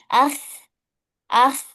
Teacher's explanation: Bukan akhe, tapi ah, ah, ya dialirkan. Ya, karena huruf kho itu punya sifat rokhawah, punya sifat mengalir. Nggak boleh dipantulkan.